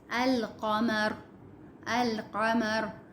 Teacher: لام پڑھا جا رہا ہے، یعنی کہ یہ جو قاف ہے یہ حروف قمری ہے